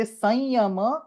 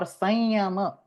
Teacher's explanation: You can say sanyama with the anuswara or sanyama with the anunasika yakara followed by a normal yakara.